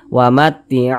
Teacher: huruf wau sukun ini huruf wau tanda sukun tuh seperti ini sebelumnya ada tanda baca domah maka huruf tersebut dibaca panjang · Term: Mad thii